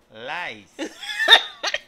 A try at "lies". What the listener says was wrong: Lies, no lies. Lies. Como si tuviese Z al final. Lies. Ajá, lies.